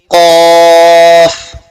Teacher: क़ाफ जड़ जुबान तालु से मिलकर अदा होता है